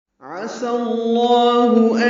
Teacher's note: عین وسط حلق سے ادا کریں گے، سین صفیر کی آواز سے ادا کریں گے لیکن پتلی آواز ہوگی. سین کو لام اسم جلالہ سے ملانا ہے، زبر کی وجہ سے لام اسم جلالہ کو پر پڑھیں گے.